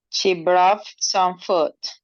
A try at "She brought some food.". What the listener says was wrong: Okay, so she brought. Now you have it.